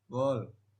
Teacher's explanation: Huruf W dapat mengubah bunyi vokal setelahnya karena sifatnya sebagai semi vokal yang memengaruhi artikulasi vokal berikut sehingga lebih membulat